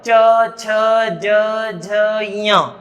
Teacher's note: जब हम च, छ, ज, झ, ञ का उच्चारण करते हैं तो हमारी जिह्वा हमारे मुख के ऊपर वाले भाग को छूती है।